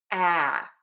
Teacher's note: We're going to start with that really open a sound. It's that very American a really wide open round lips. A. This is our stressed syllable, so it's going to be louder, longer, and higher in pitch.